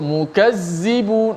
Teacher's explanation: Hujung lidah tidak keluar, jadi dia jadi mukazzibun. Tak boleh kita baca mukadzibun.